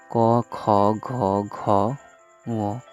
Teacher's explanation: পশ্চাৎ তালুজাত বা কোমল তালুজাত ধ্বনি। পশ্চাৎ জিহ্বা কোমল তালুকে স্পর্শ করলে যেসব ধ্বনি উচ্চারিত হয় সেগুলোকে কোমল তালুজাত ধ্বনি বলে